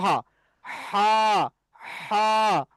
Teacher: কণ্ঠনালীর মাঝখানে এখান থেকে উচ্চারণ হবে হা। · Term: বড় হা